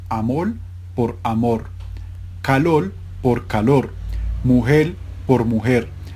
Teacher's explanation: el intercambio de la L y la R implosivas